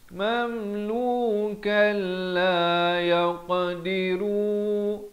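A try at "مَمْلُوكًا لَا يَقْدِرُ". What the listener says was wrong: Maaf, ru tak panjang.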